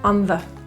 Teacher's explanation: The word the in this will be pronounced as a schwa, the, really quick, on the.